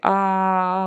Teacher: on is relaxing her facial muscles and and just kind of keeping her mouth a little more open tongue kind of in the middle don't make it sound closed off it's got to be ah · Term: open vowels